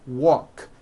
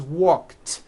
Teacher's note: The word walk, which has an unvoiced K sound at the end, walk, becomes walked.